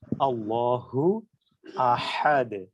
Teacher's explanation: আল্লাহ শব্দের যে হা টা সেটা হচ্ছে ছোট হা যেটা হলকের শুরু থেকে উচ্চারিত হচ্ছে